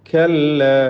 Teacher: കല്ല കാഫ് മഹ്മൂസായ ഷദീദായ അക്ഷരമാണ്, ശ്രദ്ധിക്കുക. അതിലൊരു കല്ല എന്നൊരു ഇസ്തിഅലാഇൻ്റെയോ തഫ്ഖീമിൻ്റെയോ ശബ്ദം വരരുത്.